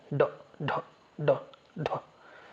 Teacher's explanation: जीभ ऊपर जाके मूर्धा से टच करके बहुत तेजी से नीचे आ जाती है। ड ढ ड ढ। इसीलिए इसको इसको नाम दिया गया उत्क्षिप्त व्यंजन।